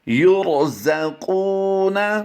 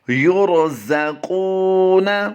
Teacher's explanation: قاف واو پیش کو ہم لمبا کر کے پڑھ رہے ہیں کیونکہ یہاں پر واو مدہ ہے، را کو پر کرنا ہے